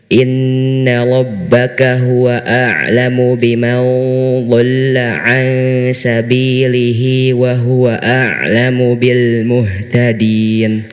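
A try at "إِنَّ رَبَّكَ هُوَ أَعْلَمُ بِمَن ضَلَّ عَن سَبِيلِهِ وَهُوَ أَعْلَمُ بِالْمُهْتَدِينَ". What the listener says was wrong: Mau do-nya jelaskan ya. Tadi nggak jelas fathahnya. Inna rabbaka huwa a'lamu biman dhalla 'an sabilihi wa huwa a'lamu bil muhtadin.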